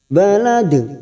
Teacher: Ada huruf dal yang mati di akhir kalimat dan dibaca waqaf, namanya qalqalah kubra. Balad, kita pantulkan jangan lupa.